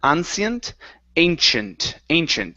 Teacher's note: use a CH sound there and it's a long a at the beginning